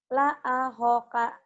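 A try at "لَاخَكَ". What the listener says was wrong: la akhoka, tak ada yang panjang ya itu. Karena la-nya ada alifnya, ada barisnya. ada baris kayak atas tuh.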